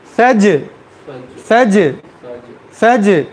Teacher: क़लक़ला यानी एक मरतबा ही बाउंस है, बार बार नहीं। सज ज नहीं है, यानी उसे एको देने की ज़रूरत नहीं, रिपीट करने की ज़रूरत नहीं, एक मरतबा बस बाउंस एक मरतबा हो गया तो ठीक।